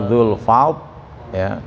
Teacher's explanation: Jadi ujung lidahnya digeraham atas ya